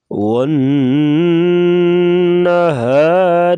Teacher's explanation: را کے نیچے زیر ہے تو را کو باریک پڑھیں گے